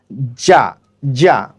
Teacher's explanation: এরপর আমরা উচ্চারণ করব জিম জবর যা। যা উচ্চারণ করার সময় আমাদের জিহ্বার যেই তালু রয়েছে সেই তালুটি আমাদের উপরের যেই শক্ত তালু রয়েছে তার সাথে লেগে উচ্চারিত হবে শক্তভাবে